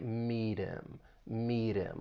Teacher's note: And this can often happen with the H sound in words like he, him, or her when they come in the middle or at the end of a sentence. Now, the final T in meet, you can use a flap T and then link that soft D sound with the vowel sound in him.